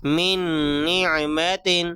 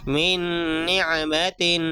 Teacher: نون ساکن کی آواز کو ناک میں چھپا کر پڑھیں گے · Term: ادغام